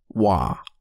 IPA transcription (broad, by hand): w